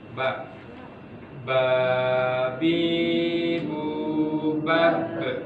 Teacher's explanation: Ba, makhrajnya adalah syafatan, dua bibir.